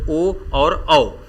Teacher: इन्हें कंठ तालव्य कहा जाता है दूसरा है कंठ होष कां इसके उच्चारण में कंठ और ओठ दोनों भाग लेते हैं · इसके उच्चारण में कंठ और ओठ दोनों भाग लेते हैं, इसीलिए इन्हें कंठोष्ठ कहा जाता है।